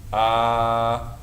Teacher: this is elongated fata called mad, so it gets two beats